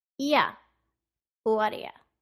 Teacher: de-stress the vowel sound in you, so the oo in you becomes a